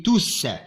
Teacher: Le S final s'entend à l'oral. On dit tous.